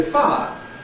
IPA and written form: faə (fire)